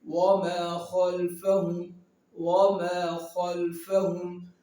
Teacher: خا حرف مستعلیہ میں سے ہے، اس کو ہم موٹا پڑھیں گے